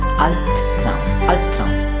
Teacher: The word Albtraum has two syllables, Albtraum. So B is coming at the end of the first syllable, and that's why its pronunciation will be P.